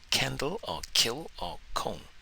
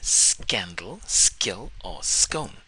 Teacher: It's the g sound in scandal, skill or scone. It's the g or ga pronounced without releasing a puff of air, without aspiration. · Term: unaspirated ga